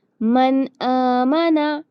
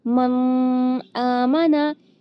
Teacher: نون کی آواز صاف آئی، اس کو غنہ کر کے اس طرح نہیں پڑھنا